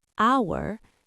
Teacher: H is a consonant, so why an hour? Because hour is pronounced hour, the H is silent.